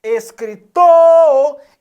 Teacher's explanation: o tor é a sílaba tônica